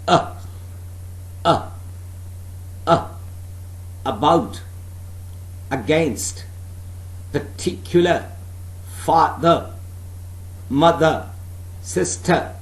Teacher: it's a central vowel sound yes it is also used in weak form